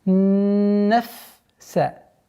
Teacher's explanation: Обратите внимание, чтобы фа до конца произносилось со свойством фрикативности.